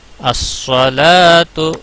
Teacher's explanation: الصلاۃ، الصلاۃ، صاد کو پور پڑھا جائے گا. الصلاۃ، لام کے اوپر کھڑی زبر ہے، ایک الف کے برابر کھینچا جائے گا